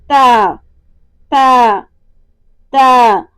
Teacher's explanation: تا کیا ہے؟ حروف استفعال میں سے اور باریک ادا ہوتا ہے۔ · زبان کی نوک اوپر والے دانتوں کی جڑوں سے لگے گی اور حرف تا ادا ہوگا